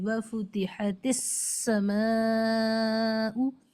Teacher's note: وَفُتِحَتِ السَّمَاءُ، یہاں ہم تھوڑا زیادہ کر کے اس لیے بتا رہے ہیں تاکہ آپ کو صاف سنائی دے جائے کہ سین کے اندر اینی ہاؤ سیٹی ادا ہونی ہے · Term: سیٹی والا حرف